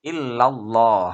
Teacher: lam jalalah yang harus dibaca tafkhim atau tebal yang maka Adnan Adapun alasannya adalah karena lamjalalah didahului fathah itu